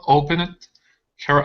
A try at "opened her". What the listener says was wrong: Let's hit this ed ending. Instead of opened her, it's opened her.